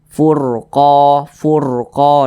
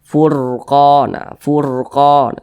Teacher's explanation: huruf r-nya ini dibaca tebal furqo furqo nah dibaca tebal seperti itu baca tebal itu ketika